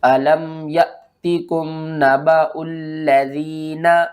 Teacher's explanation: جب بھی الف کے اوپر جزم آ جائے تو پھر ہم اس کو جھٹکے کے ساتھ پڑھتے ہیں